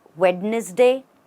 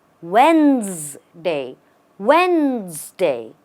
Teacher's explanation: the right way to pronounce this word is Wednesday just Wednesday the D does not exist in the pronunciation the e as well does not exist what we what we say it as is when and the